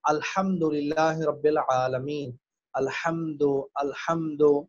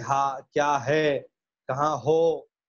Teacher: ایک ہا ہوتا ہے جو حلق سے ادا ہوتا ہے، جس سے ہم کہتے ہیں الحمدللہ رب العالمین، الحمد. اور ایک ہوتا ہے ہا، سینے سے ادا ہوتا ہے ہا، جس سے ہم کہتے ہیں ہا کیا ہے، کہاں ہو.